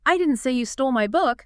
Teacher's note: Stressing the pronoun you.